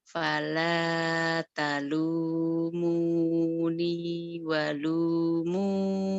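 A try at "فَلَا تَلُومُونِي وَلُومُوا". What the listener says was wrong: ya karena nadanya belum tinggi. Harusnya kan ini. Fala talumuni walumu. Ada penekanan nadanya.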